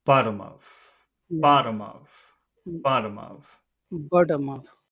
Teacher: we'll start with our final important word which is bottom and we'll make sure that all of that sounds Low